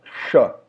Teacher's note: O Sh é como se você fosse falar o Sa de sapo, só que você bota a língua no céu da boca e fala Sh.